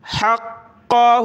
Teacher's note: قاف کو سخت کیا تشدید کی وجہ سے